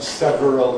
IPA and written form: ˈsevərəl (several)